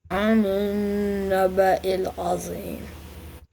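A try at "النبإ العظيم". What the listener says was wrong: Not Zeem. I didn't say the meme yet. Anin naba'il azim.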